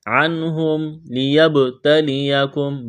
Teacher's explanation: نون ساکن کے بعد ہا ہے، اظہار کریں گے